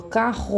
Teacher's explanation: se vocês colocarem a mão na garganta vocês vão sentir que treme lá atrás e não a ponta da língua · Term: dois R